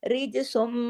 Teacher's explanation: اب دیکھیے سین 2 پہ سن کی تنوین ہے لیکن آگے میم پہ تشدید ہے تو میم میں جڑے گا نا، رجسم ایسے غنہ ہوگا میم کی تشدید کی وجہ سے. سین 2 پہ سن نہیں ہوگا، سین جا کے میم میں جڑ جائے گا